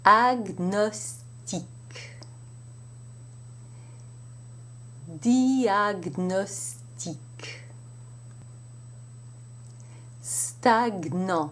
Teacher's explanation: And of course, there are exceptions. And in these exceptions, the G and the N are pronounced separately, as you would have it in English.